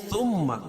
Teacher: ثم میم مشدد، اس میں غنہ ہوگا